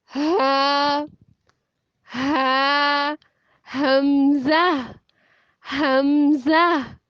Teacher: हा हलक के लास्ट वाले हिस्से से अदा होता है।